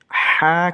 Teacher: এটা বড় হা অর্থাৎ উচ্চারণ করার সময় বাতাস বের হবে